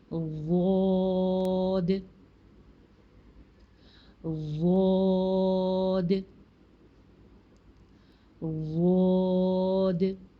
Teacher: Lift करें ऊपर, lift करके ज़ुबान की, जब आपकी ज़ुबान ऊपर जाएगी तो ऊपर दाढ़ों को टच करेगी साइड्स पे, चाहे राइट साइड पे टच करे, चाहे लेफ़्ट पे, चाहे दोनों तरफ, ठीक है। उसके बाद लंबी सी आवाज़ में, यानी कि मद के साथ इसकी अदायगी करेंगे, थोड़ी सी लंबी आवाज़ निकालेंगे, अलिफ को भी मोटा पढ़ेंगे, और लास्ट के दाल को जिससे स्वाद में बाउंस किया था वैसे यहाँ पे भी बाउंस करेंगे।